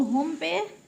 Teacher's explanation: نون ساکن کے بعد صاد حروف اخفاء میں سے ہے تو اخفاء ناک میں آواز لے جانی ہے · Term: غنہ اخفاء